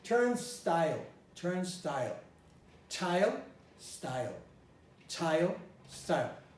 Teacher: after an S, the S eliminates the aspiration.